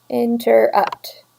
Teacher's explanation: interrupts we sort of stressed the last part · So an anapest is 3 syllables. It's unstressed, unstressed, stressed.